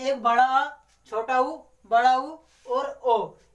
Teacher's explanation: इनको बोलने में जीभ का हमारा पिछला भाग यूज होता है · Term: पश्च स्वर